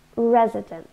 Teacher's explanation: 3 syllables and we stress the first one